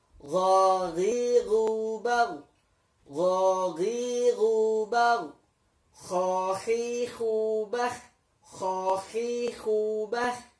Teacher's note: Ini keluar dari tenggorokan yang atas, bagian yang paling atas. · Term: gha dan kha